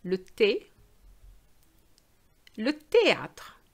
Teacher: The H is really silent. We're just pronouncing the T and the A sound. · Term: don't pronounce the H